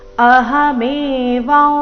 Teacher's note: ಅನುಸ್ವಾರದ ಉಚ್ಚಾರಣೆ ನಾಸಿಕವ ರೀತಿ ಬರಬೇಕು